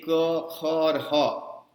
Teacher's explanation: ये क, ख और ह कंठ से निकाले जाते हैं हिंदी में